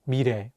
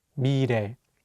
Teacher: Here, the 리을 consonant is between the vowels E and 에, so it will have more of an R sound.